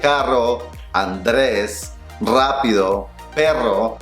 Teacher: we roll our R's. Which means that the tip of the tongue is touching the roof of the mouth several times, and you relax the tongue.